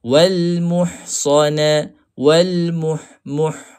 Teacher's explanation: Pastikan berada di tengah halqu. Huruf ha ni huruf yang keluar daripada tengah halqu.